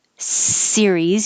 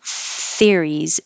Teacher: And if you are trying to say the word theories, but you don't have your tongue far enough out, if it's behind your teeth, it could be mistaken for this word, a whole nother word. So series, your tongue is behind your teeth, and theories, it's more between and you have more airflow.